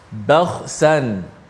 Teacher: Kha yang mati tu tebal, sebelum dan selepasnya nipis.